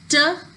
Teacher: And when we speak the sound as tuh, at that time the tongue is making a closure with the alveolar ridge and then the air is escaping with a puff